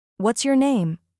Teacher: But for wh questions, your tone falls.